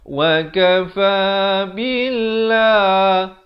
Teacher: Lafz jalalah di sini dibaca nipis 2 harakat